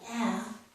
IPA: æ